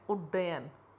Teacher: त के बाद यदि ट या ड हो तो त का ट या ड हो जाता है।